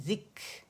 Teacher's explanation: کھ کی آواز نہیں آنی چاہیے کہ آپ حلق سے ہا کی آواز پروڈیوس کریں